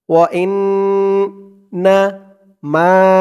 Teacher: এখানে ওয়াজিব গুন্নাহ হরকতের পরে নুনের উপরে তাসদিদ ওয়া ইন্না মা মা এক আলিফ টান জবরের পরে খালি আলিফ